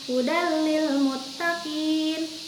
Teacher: Tapi yang membedakannya adalah kalau bigunah didengungkan atau menggunakan gunah, kalau idgham bila gunah tidak didengungkan, tidak menggunakan gunah